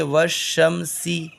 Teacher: اور لام اگر حروف شمسی کے شروع میں ہو تو الف اور لام کو نہ پڑھیں گے، بلکہ بعد والے حرف سے ملا کر پڑھیں گے، جیسے والشمسی۔